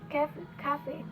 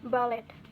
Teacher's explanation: stress on the second syllable